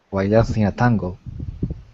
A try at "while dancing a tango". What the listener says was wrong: Yeah, that's the problem. It's the L. Not while. You're putting your tongue back too far in your mouth. Because I'm hearing while. But it's got to be while. Your tongue does not touch anything. It's floating in your mouth. While.